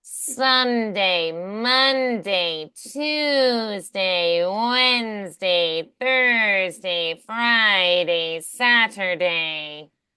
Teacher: they send the air through the sinuses to get that nasal quality